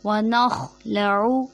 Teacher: खौ हलक के ऊपर वाले हिस्से से अदा होगा, और खौ मोटे हुर्फ़ों में से, इसलिए इसको हम मोटा अदा करेंगे